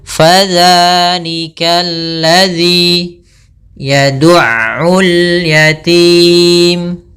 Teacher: Fa tadi kelupaan, yaitu jangan sampai dipantul, jangan sampai pa dengan p, tapi dia fa, aliran nafasnya mengalir